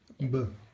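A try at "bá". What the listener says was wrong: Ba. Tam je dlžen na to A. Ba.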